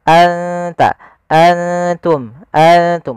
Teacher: Ikfa itu membaca antara izhar dan Idam maka maka di sini nunnya kita samarkan ke huruf ta langsung seakan-akan kita melafalkan huruf ta